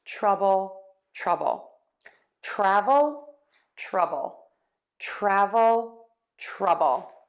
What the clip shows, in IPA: ˈtrʌbəl